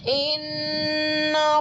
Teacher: हमजा मुतहर्रिक, नून मुशद्दद है तो गुन्ना होगा और नरमी भी होगी